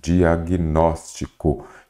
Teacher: você observa que a sílaba tônica é a antepenúltima